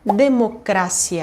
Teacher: a penúltima sílaba vai ser a sílaba tônica